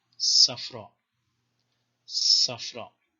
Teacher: the Sadi, which is an emphatic sibilant